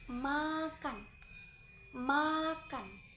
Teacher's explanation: Cara pengucapannya, kedua bibir dirapatkan dirapatkan penuh, pita suara bergetar dan udara keluar melalui rongga hidung